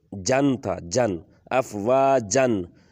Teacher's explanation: اس میں نون کی جو آواز آ رہی ہے اس کو ہم غنہ میں بدل لیں گے، نون کو چھپائیں گے ، واضح کر کے نہیں پڑھیں گے۔ افواجن، جن کو آگے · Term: اخفا